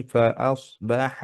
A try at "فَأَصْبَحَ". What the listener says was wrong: فأصبح ماد নেই খেয়াল করেন فأصبح